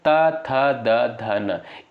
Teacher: इनका उच्चारण जो होता है दोस्तों दंत से होता है